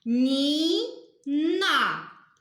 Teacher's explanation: падає наголос вимовляємо який звук ми тягнемо голосом звук і тобто наголос падає на звук І